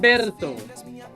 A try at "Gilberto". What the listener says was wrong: No, you're speaking Spanish. In Brazil, the R is silent.